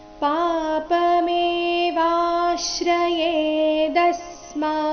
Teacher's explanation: ಈ ಚರಣದಲ್ಲಿ ವ ದೀರ್ಘ ಬಂದು ಅದರ ಮೇಲೆ ಸೌಮ್ಯ ಆಘಾತ ಬರಬೇಕು ಮುಂದೆ ಶ್ರ ಇದ್ದ ಕಾರಣ ದ ಮೇಲೆ ಕೂಡ ಆಘಾತ ಬರಬೇಕು ಮುಂದೆ ಸ್ಮ · ದ ಮೇಲೆ ಕೂಡ ಆಘಾತ ಬರಬೇಕು ಮುಂದೆ ಸ್ಮ ಎಂಬ ಸಂಯುಕ್ತಕ್ಷರ ಇದ್ದ ಕಾರಣ